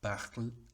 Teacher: la E caduca tiende a, por lo menos en la lengua oral, tiende a ser un sonido muy cortito, muy oscuro, y que no se acentúa para nada. O sea, la acentuación en este caso es parle.